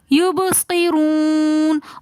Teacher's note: یب، با کی آواز واپس پلٹ کر آئے گی. یبصرون، رو کے اوپر پیش آ رہا ہے اس لیے ہم رو کو موٹا پڑھیں گے